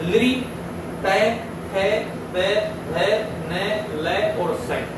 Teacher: इन वर्णों का उच्चारण स्थान दांत होते हैं, अर्थात इनको दांतों के सहयोग से जो है उच्चारित किया जाता है और इनको जो है दंतः वर्णा बोला जाता है।